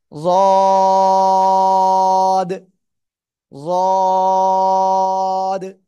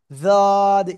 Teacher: জিহ্বার গোড়ার কিনারা উপরে মাড়ির দাঁতের গোড়ার সাথে লাগবে, লাগিয়া আমরা উচ্চারণ করব।